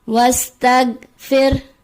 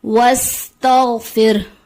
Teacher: غین کی ادائیگی کو غلط پڑھ دیا جاتا ہے، غین کی جگہ گاف کی آواز آ جاتی ہے